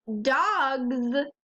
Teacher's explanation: in the word dogs it says Z at the end even though there's an S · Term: the z sound